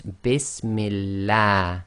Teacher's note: Kasra before the name of Allah makes the Lam of Allah go tarqiq, i.e. light